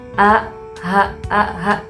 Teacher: hamzah dengan hipal tenggorokan. Jadi, tenggorokan yang di bawah paling bawah. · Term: hamzah dengan ha, pangkal tenggorokan